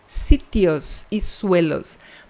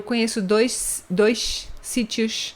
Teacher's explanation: Não existe chiado em castelhano.